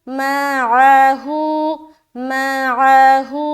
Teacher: ہو میں کھینچ رہے ایک الف کے برابر